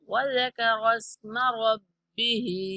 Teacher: وذكر اسم میم کو نہیں کھینچنا